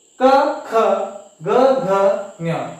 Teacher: ಈ ಕ ವರ್ಗದ ಅಕ್ಷರಗಳನ್ನ ಹೇಳಬೇಕಾದರೆ ನಮಗೆ ಹೆಚ್ಚು ಕಂಠ ಭಾಗ ಉಪಯೋಗಕ್ಕೆ ಬರುತ್ತೆ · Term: ಖಂಟ್ಯಾಕ್ಷರ, ಕಂಠ್ಯಾಕ್ಷರ